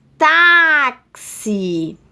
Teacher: o tá foi alongado né então é a penúltima sílaba tônica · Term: paroxítona